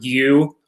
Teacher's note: The sound is what's called a voiced palatal approximant. This is basically the English letter Y, at least in certain usages of it, like the word you, Y-O-U, the y, the beginning of that word.